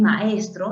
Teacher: en esta secuencia vocálica tenemos dos vocales abiertas